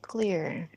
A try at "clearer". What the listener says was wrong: So that sounded like clear. Is it clear?